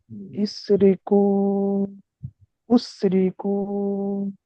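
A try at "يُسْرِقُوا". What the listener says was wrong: উ, ইয়া পেশ কি উ হয়? ইয়া পেশ কি হয়? হ্যাঁ, ইউস না ইউস?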